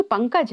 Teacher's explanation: अनुस्वार का उच्चारण है इसका उच्चारण केवल नाक के द्वारा होता है